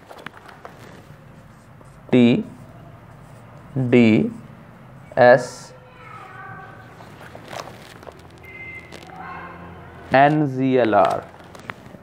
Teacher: Alveolar sounds आर articulated by raising the front part of the tongue टू the alveolar ridge. आर जो tip of tongue है वो आप यहां ऊपर alveolar से लगाते हैं तो ये साउंड्स आती हैं.